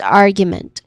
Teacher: The stress is on the first syllable which is r which is a short uh vowel sound. And then second syllable is gu which has um a letter y sound in there and a long oo vowel sound. And then last syllable is meant meant which has awa sound.